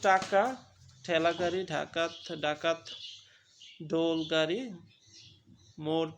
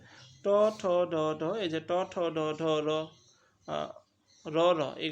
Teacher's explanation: জীবের ডগা মূর্ধার সঙ্গে লেগে বায়ু পথে বাধা সৃষ্টি করে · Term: মূর্ধন্য ব্যঞ্জন